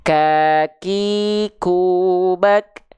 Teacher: ketika berharakat memang si suara percikannya itu kurang terasa Kenapa karena Kehalangin oleh bunyi vokal a iu-nya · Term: huruf Kaf